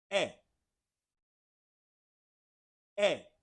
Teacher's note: it's almost like you're saying the letter A in English, but you're saying it very fast and short